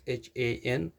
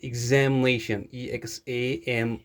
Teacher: Some people read it shan, and that is not the correct sound. It's shn. There is no vowel sound involved in reading tion. For example, we have completion, completion.